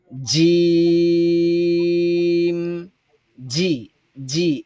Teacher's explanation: আগা এটা একটু নিচের দিকে আসবে, আর মধ্যখানটা একটু উপরের দিকে চলে যাবে। উচ্চারণের সময় একটু প্রেসার হবে, আর এই প্রেসারের ফলে জিহ্বার মধ্যখানটা উপরে চলে যাবে। এজন্য জিমের উচ্চারণটা আওয়াজে মোটা হবে।